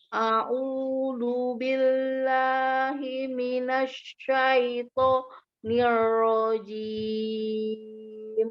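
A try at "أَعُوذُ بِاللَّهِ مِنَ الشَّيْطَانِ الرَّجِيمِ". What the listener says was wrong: Ya, zalnya masih lari ke dal kecil ya. Ya, nanti dilatih lagi.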